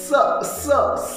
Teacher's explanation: कसा आवाज येतो, आला सहचा आवाज बघा, आला सहचा आवाज म्हणजे घर्षणामुळे स असा आवाज होतो. किंवा सचा आवाज काढताना तोंडातील हवा जी आहे ही म्हणजे घासली जाते, घर्षण होतो · स चा उच्चार करताना तोंडावाटे जो आपण स चा उच्चार जो करतो तर तोंडातील जी हवा आहे ही कुठेतरी घासली जाते. स स स आणि त्या घर्षणामुळे उष्णता निर्माण होते आणि म्हणूनच त्यांना उष्मे किंवा घर्षक असं म्हटलं जाते.